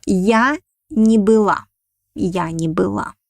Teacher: we pronounce it like one word не была, but the accent falls on the main verb with the meaning